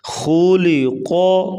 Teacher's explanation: خا اور قاف کو پر پڑھیں گے اور درمیان میں لام ہے، اس کو باریک پڑھا جائے گا